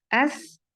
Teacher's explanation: एस में देखें अलिफ को भी बारीक अदा किया जाएगा